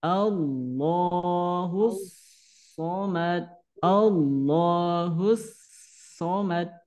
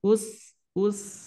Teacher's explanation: ujung gigi seri bawah ujung lidah dengan ujung gigi seri bawah satu makhraj satu tempat tapi beda sifat kalau SH itu tebal Kalau sa itu tipis